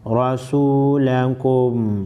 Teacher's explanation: راسین واو فیسو لام زبر لا کاف میم پیش کم رسولکم را پر زبر ہے موٹی پڑی جائے گی